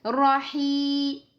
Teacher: 2 temps pour le ya parce que c'est un mad tabi'i, mad naturel. D'accord? Donc 2 temps.